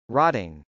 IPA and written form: rˈɑtɪŋ (rotting)